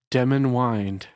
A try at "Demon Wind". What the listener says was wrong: You put the emphasis on the wrong syllable. It is Demon Wind.